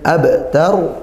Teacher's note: Kemudian abtar, ada bak sukun dibaca qalqalah sughra, qalqalah yang kecil ya, qalqalah yang ringan itu